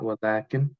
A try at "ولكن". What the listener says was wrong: Maybe not ولكن, although you pronounced it with a long aleph, by the way. But when you say it out loud,